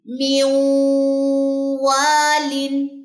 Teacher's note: اب واؤ کے مخرج کے قریب آ کے غنہ کریں، میوں والن، نون ڈراپ ہو جائے گا۔